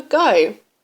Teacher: a very common example is replacing the G sound with a d saying do for go